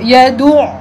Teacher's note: Bila kita sebut yadu, yad suara nafas kita tersekat.